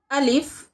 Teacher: मुंह के खाली हिस्से से अदा होता है